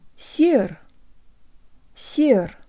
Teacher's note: The first syllable almost rhymes with the English word air, and the S is soft, meaning you can almost hear a Y sound built into the S.